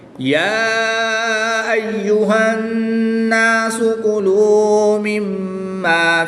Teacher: نون مشدد میں غنہ کر کے پڑھیں گے، میم مشدد میں بھی غنہ کر کے پڑھیں گے